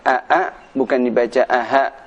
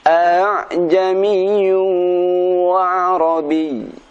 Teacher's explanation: tashil, yaitu membaca hamzah yang kedua pada lafadz a'jamiyu dengan suara yang ringan.